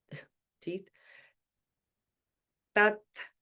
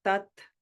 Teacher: Notice the T is different from tea as in tea that we drink. It's tea with a dental sound. You put your tongue between your teeth. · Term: dental T